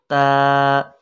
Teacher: ज़बान की नोक को सामने ऊपर वाले दांतों की जड़ के साथ लगाएंगे तो त अदा हो जाएगी